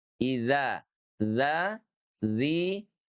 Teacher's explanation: Karena surat dhal itu bersih. Tidak ada hembusan napas karena cirinya adalah jahr